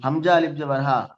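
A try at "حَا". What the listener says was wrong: হামজা কেন বলছেন? হা আলিফ জাবার হা।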